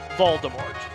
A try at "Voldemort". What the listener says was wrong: I don't think they pronounced the T, but yeah, Voldemort. I remember hearing it was supposed to be, like, French pronunciation, because it literally meant flight from death, but this is, like, 15-year-old trivia that I can't remember fully, so we'll just go with it.